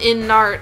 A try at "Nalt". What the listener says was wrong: Nalt, not Nart. There's no hard R's in Japanese.